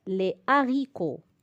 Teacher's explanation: Nous sommes en présence d'un H aspiré. Donc, pas de liaison.